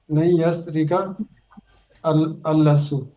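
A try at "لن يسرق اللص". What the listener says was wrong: लिस्सु, लाम के नीचे से लन यस्रिकल लिस्सु। तो ये बन जाएगा लन यस्रिकल लिस्सु, चोर हरगिज चोरी नहीं करेगा।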